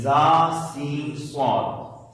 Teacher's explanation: जब भी आप पढ़ेंगे तो इसमें से सीटी निकलनी चाहिए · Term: सीटी वाले रूफ